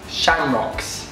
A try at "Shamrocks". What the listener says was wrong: No, that was London. You were like, shamrocks. You're too proper. It's more aggressive, it's like shamrocks.